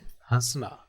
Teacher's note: मुंह और नाक दोनों से आपकी ध्वनि निकलती है तो उसको हम बोलते हैं अनुनासिक